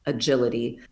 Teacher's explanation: The word agility starts with a schwa